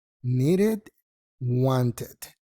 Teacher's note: no es ed sino una I corta con la D o la T